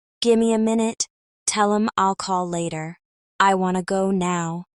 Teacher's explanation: give me becomes gimme, tell them becomes tell 'em, and want to becomes wanna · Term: reductions